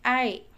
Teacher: ada yang menggunakan kata wae, ada yang menggunakan ai, w-nya dihilangkan